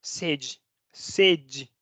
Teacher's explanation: Se cierra tanto, esa E se cierra tanto que se pronuncia como una I. Sede.